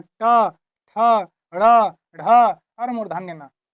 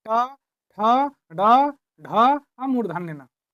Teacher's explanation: यानी कि जिसका उच्चारण करने में जीभ को पीछे की ओर मोड़ना पड़ जाए। जीभ को पीछे की ओर मोड़ के जिसका उच्चारण होता है वह मूर्धन्य व्यंजन कहलाता है।